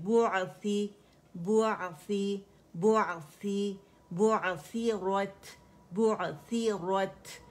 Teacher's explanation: اس میں آئین پہ توسط ہے تو آواز پارشلی چلے گی